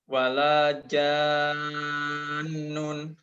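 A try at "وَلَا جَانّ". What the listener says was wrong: Kalau berhenti, nunnya nggak dibaca tapi ditahan. Wala jan.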